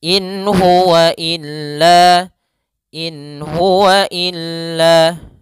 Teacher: Kemudian pada lafal in huwa ada bacaan izhar, yaitu nun sukun bertemu dengan huruf ha. Maka suara nunnya jelas.